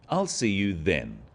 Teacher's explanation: is now a definite commitment and an end to the arrangement notice how the stress is on the word then to confirm that the time is definite